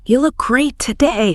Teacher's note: Okay, take the phrase, "You look great today." If I say it with a steady, appreciative downward pitch, it's a genuine compliment.